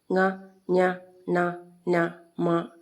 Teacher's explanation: മൂക്കിന്റെ സഹായമില്ലാതെ ഇവയെ ഉച്ചരിക്കുക സാധ്യമല്ല അതുകൊണ്ടാണ് ഇവയെ അനുനാസികങ്ങൾ എന്ന് പറയുന്നത് നമ്മൾ മൂക്കൊന്ന് അടച്ചുപിടിച്ച് ഇവയെ വായിച്ചു നോക്കുമ്പോൾ